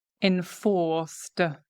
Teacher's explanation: It's got a D ending because here the C is pronounced enforced. We start engaging the vocal cords, right? In fact, it almost sounds like a Z sound, enforced.